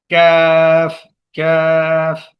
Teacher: کاف ادا ہوتا ہے قوف کے مخرج سے ذرا ہٹ کر منہ کی جانب